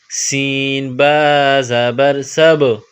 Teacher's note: سین اور با کو آپس میں ملائیں گے، سین میں سیٹی کی آواز پیدا کریں گے اور با پر قلقلہ کریں گے